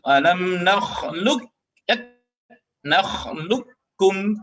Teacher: huruf qaf dan kaf itu ketika bertemu otomatis harus diidghamkan, meskipun idghamnya tidak kamil terkait dengan huruf qaf yang bertemu dengan huruf kaf.